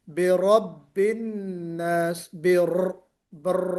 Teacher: تو قل اعوذ برب الناس، را، جب ہم را کو پر کرتے ہیں تو کوشش یہ کرنا ہے کہ را میں ایک صفت ہوتی ہے، صفت تکریر، برب الناس، بر، اس کو ریپیٹیشن، تو را کو نکالتے ہوئے آواز میں ریپیٹیشن آنی چاہیے